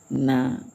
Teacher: nun ya menjadi nah ada ke hidungnya sedikit